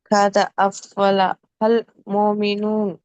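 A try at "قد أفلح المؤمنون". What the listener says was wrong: మోమినూన్, నూన్ శబ్దం చక్కగా వినబడాలి. నూన్ చివర్లో శబ్దం వినపడట్ల, మోమినూ వరకు వినపడుతుంది. మోమినూన్ న్ చివర్లో రావాలి.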